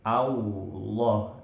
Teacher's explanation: Jadi jangan menebalkan lafzul jalalah dengan monyong, karena, ya, menebalkan huruf tidak dengan monyong, tapi dengan menaikkan bagian belakang lidah dan juga memenuhi, ya, suara di dalam mulut. Allah itu sudah sempurna bunyi tebalnya, tidak memerlukan suara bibir. Allah, ya, ya, karena hanya huruf waw sajalah yang harus dimonyongkan, dan huruf-huruf yang didomahkan yang harus dibaca monyong.